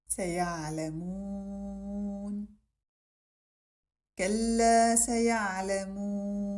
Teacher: Recite the ayn carefully, taking care to preserve the lightness of the letter as well as giving it its complete time.